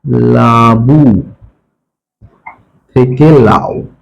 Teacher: মূলত প্রথমের যে অ সেটা লোপ পেয়েছে, তাই আমরা একে আদি স্বরলোপ বলতে পারি